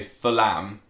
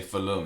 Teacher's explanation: again it's sort of like a silent H and you don't say Fullham You say Full-hum